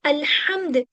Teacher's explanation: बड़ा वाला हा आता है जो हमारे हलक से निकलता है